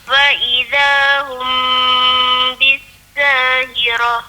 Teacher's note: Hum situ dengung. Hukum ikhfa syafawi tu.